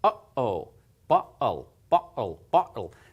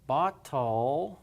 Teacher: it's a catch sort of a catch in your voice like a pause you're sort of clipping it cutting it off and there's a very very short period of silence in there